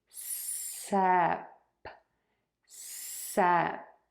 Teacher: Tip of the tongue is down for that s in the middle of the mouth just peeking out between the top and the bottom teeth for that eh and then mouth closes for the p.